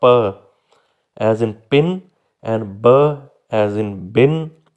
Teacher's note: The lips make a total closure, के होंठ मुकम्मल तौर पर बंद होंगे फिर सडनली रिलीज होंगे तो ये साउंड्स प्रोड्यूस होंगी।